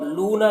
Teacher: ساکن سے پہلے پیش ہے، اور لونا یہاں پر بھی دیکھیے واو ساکن سے پہلے پیش ہے تو واو مدہ ہوگا، دونوں کو ایک الف کے برابر کھینچ کر پڑھیں گے